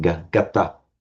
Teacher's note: We would have expected to see ganta, but the N has dropped and that's where it's become gata.